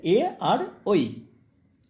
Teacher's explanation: কণ্ঠ এবং তালু দুটোই উচ্চারণ স্থান